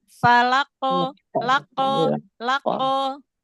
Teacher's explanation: dia syiddah dulu di makhraj huruf qaf, pangkal lidah bagian atas ketemu dengan langit-langit yang lunak. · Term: qalqalah pada qaf